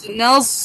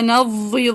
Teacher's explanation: دیکھیں کتنی شارپ سیٹی ہے، نز. ٹھیک ہے، سو ضاد کی طرح آواز میں نا اطباق نہیں آنا چاہیے. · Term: سیٹی والا زا